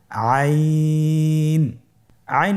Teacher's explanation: আইন আর হরফটি কন্ঠনালীর মধ্যখান থেকে উচ্চারিত হয়।